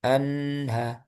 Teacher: Sebelum ke H jangan dilepas dulu. Jadi lepasnya itu langsung ke H.